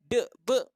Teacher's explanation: Asal dia bunyi lantun je, de, be, maka dia merupakan qalqalah.